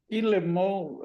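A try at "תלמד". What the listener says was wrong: É, mas ó, T e I fica como? Ti, tilemod. Tem um D, ele é um D mudo, tilemod.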